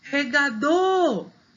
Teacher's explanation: Essa é fácil porque está com acento. Regador, o dor é a sílaba mais forte